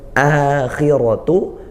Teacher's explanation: akhiratu hamzahnya dikuatkan dari makhrajnya yaitu di pangkal tenggorokan dan panjang.